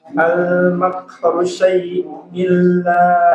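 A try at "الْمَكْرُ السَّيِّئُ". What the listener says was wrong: Tasydid pada sin. Al makrus sayyi'u.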